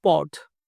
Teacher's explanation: ಓ ಓ ಅಥವಾ ಆ ಅಂತೇಳಿ ನಾವು ಓದ್ಬೇಕು. ಆ ಫಾರ್ ಎಕ್ಸಾಂಪಲ್ POT ಅಂದ್ರೆ ಪೋಟ್ ಅನ್ಬಾರ್ದು, ಪಾಟ್.